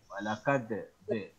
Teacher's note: Dal di alisan. Ujung lidah menyentuh gigi sama gusi atas.